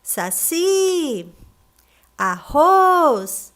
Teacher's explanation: As últimas sílabas dessas palavras são as mais fortes, então essas palavras são classificadas como oxítonas